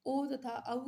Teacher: ओ तथा औ का उच्चारण स्थान कंठ और ओष्ठ है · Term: कंठोष्ठ